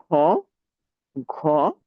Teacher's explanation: যে সমস্ত ধ্বনি উচ্চারণের সময় দেখা যাচ্ছে যে আমাদের মুখ থেকে বাতাস অনেক বেশি পরিমাণে নির্গত হয় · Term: মহাপ্রাণ